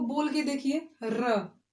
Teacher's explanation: और इसको बोलने में बोलने में जो जीभ है वो मुड़ रही है थोड़ा सा, इसलिए इसको कहते हैं लुंठित वर्ण